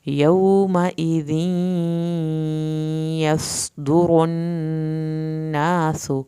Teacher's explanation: यौमइज़ या की शत पे देर लगेगी लेकिन सख्ती नहीं दिखानी।